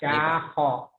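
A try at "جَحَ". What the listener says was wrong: sama, cuman titiknya beda. Titik di bawah satu jim. Nggak ada titik H. Titiknya ke atas jadi kho.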